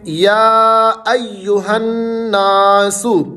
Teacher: یا کے اوپر مد بھی ہے، کھڑا زبر بھی ہے، اس کو آپ نے لمبا کرنا ہے، کھینچنا ہے، یہ لمبا کرنے کی علامت ہے۔